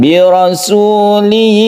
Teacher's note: Wa mubashshiram bi rasuli, kita panjangkan tanwin bertemu dengan ya, kita sebut dengan idgham bi gunnah dan kita dengungkan